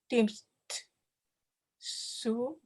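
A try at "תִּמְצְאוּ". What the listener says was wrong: Let me hear a small sound between the ts and the u. Tim tse u.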